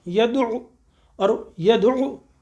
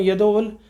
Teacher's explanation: اب یہ یدعو ہے، دیکھیے دال یدعو اور یدعو، اب وہ مل رہا ہے یدعو عین سے جب جا کے مل رہا ہے تو عین کے اوپر بھی پیش ہے اور حلق کا حرف ہے، ہم نے اسے حلق سے نکالنا ہے. ہم اسے پڑھ دیں یدعو تو وہ ہم نے کیا پڑھا ہے، الف پڑھ دیا، کیا پڑھ دیا، وہ غلط ہے.